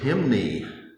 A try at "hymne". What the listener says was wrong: I don't think you pronounce the E, perhaps.